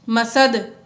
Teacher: دال حروف قلقلہ میں سے ہے، وقف کی وجہ سے ساکن ہو گیا، اس لیے یہاں پر ہم نے قلقلہ ظاہر کر کے پڑھا